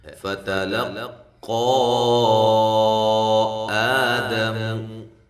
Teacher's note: فتا دونوں باریک ہیں، لام بھی باریک ہے، قاف کو خوب موٹا کریں اور ساتھ مد جائز ہے، آ الف مدہ کے قائم مقام